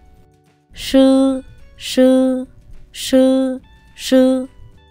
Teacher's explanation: SH phát âm giống chữ S trong tiếng Việt nhưng cuốn lưỡi cong lên